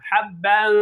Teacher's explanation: Bak genizden ses çıkarıyorum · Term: ihfa